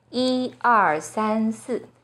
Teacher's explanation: When 一 is used as a number, it's the first flat tone